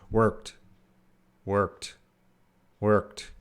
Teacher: when we're actually speaking English that T might be very reduced or a lowered sound